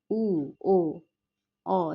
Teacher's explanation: উ ও অ এগুলো প্রত্যেকটাই পশ্চাৎ স্বরধ্বনি।